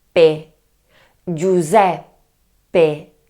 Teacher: the secret is to do a short pause, we stop in the word. Therefore we say: Giuseppe Giuseppe. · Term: double P